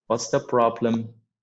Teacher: So the rise and fall of the sentence is different. I would start with a falling intonation and then I would just go up with a rising one. So when I say problem, so this one is a rising intonation.